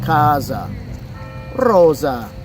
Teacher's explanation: But in Italian, the S sound is more like the English Z. It's a softer sound, right?